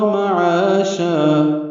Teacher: معاشا میں عا الف مدہ اور شا مد عوض، دو دو حرکات یہ بھی لمبے کریں گے وقفاً